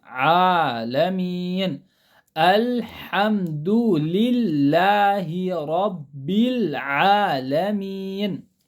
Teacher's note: عین کی آواز حلق کے درمیانی حصے سے نکلتی